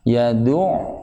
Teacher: bunyinya sedikit dipanjangkan ketika dia sukun ain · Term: sifat bainiyah